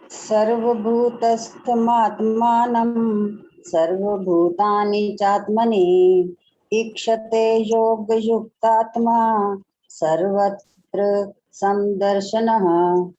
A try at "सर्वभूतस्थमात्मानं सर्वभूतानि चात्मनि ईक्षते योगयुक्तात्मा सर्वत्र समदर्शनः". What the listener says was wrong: बिल्कुल ठीक।